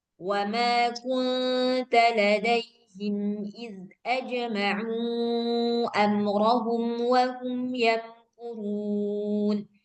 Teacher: Mim sukunnya dibaca jelas dan enggak perlu dibaca dengung. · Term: izhar syafawi